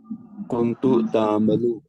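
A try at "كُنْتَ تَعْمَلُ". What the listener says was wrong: Kunta. kunta. It is kunta because ta has pata.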